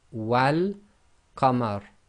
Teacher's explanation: So the wa will now join to the lam in the definite article in this case, because this is one of the moon letters, and the giveaway here is the lam has got a sukoon on it, so it is going to be involved in the sound.